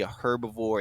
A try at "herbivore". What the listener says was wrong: A herbivore? The H is silent.